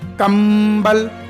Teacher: मुंह बंद हो जाएगा और नाक से पूरी हवा निकलेगी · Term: अनुस्वार